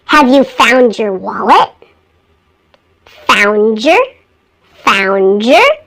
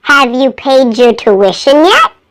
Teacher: you will also hear D converted into J in words that end in D that are followed by the word your